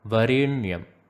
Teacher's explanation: If you find yourself positioning the tongue at the teeth region when you say Varenyam, then that is wrong. The tongue should be touching the roof of the mouth when you are pronouncing the N in Varenyam. Varenyam. You can find a little bit of a pressurized pronunciation there. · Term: retroflex sound